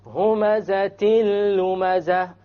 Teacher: You didn't hear the end sound, it was dropped.